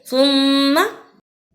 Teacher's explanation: سا کو ادا کرنے کا طریقہ زبان کی نوک کو سامنے اوپر کے دانتوں کے کناروں سے ملائیں اور بولیں